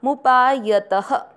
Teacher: त में अ की मात्रा तो विसर्ग को पढ़ेंगे ह